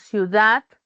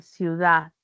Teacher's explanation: al final de la palabra decimos ciudad, ya no pronunciamos la de y enfatizamos solo la vocal · hay una pérdida de la D cuando está entre vocales o al final de la palabra